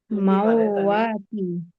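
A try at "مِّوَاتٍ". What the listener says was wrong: মাউ না, মিউ। মিমু ওয়াউজের মিউ।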